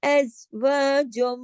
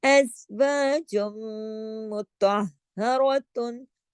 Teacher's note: نون اور میم جب شد کے ساتھ ہوتے ہیں تو وہاں بڑا غنہ ہوتا ہے، یہاں پہ ادغام ہو رہا ہے، جیم کی آواز میم میں ضم ہو جائے گی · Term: ادغام تام بالغنہ